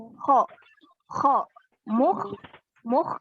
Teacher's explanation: Huruf kho itu satu-satunya huruf yang kasar. Jadi dia keluarnya dari tenggorokan. Kho. Kho.